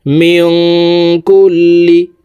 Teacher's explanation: ইফা গুন্না নুন এর পরে হরফ কাফ আসছে এই কারণে এই নুন সাকিনকে নাকের ভিতরে লুকাইয়া গুন্নার সহিত পড়বো